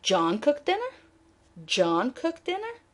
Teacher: let's shift the prominence and focus on John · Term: shifting prominence